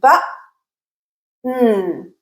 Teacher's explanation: I'm completely closing airflow, b, and then I'm adding the n sound. I'm completely closing, opening, and then I'm adding the n sound. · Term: glottal stop